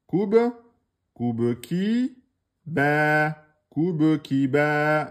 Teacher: on a Ba sans voyelle, donc c'est Ba Kalkala, Soukoun. Koube ki, Ba, Koube ki, Ba.